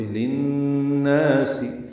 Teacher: للناس میں لام کو نون سے ملائیں گے، بیچ میں ایک لام ہے وہ نہیں پڑھا جائے گا، یہ ادغام ہے، ادغام شمسی ہے، غنہ بھی ہے یہاں پہ.